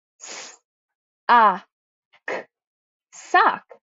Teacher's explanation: I have my O vowel. A short O makes an ah sound. So when I sound out the word, I have s-a-k, sock.